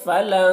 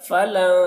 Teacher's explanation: اب یہاں پر اخفا نون میں ہو رہا ہے، کیونکہ نون ساکن کے بعد حروف اخفا میں سے تا ہے، تو نون میں اخفا ہوگا۔ نون کی آواز کو ناک میں چھپا کر ایک الف کی مقدار کھینچیں گے، گنگنائیں گے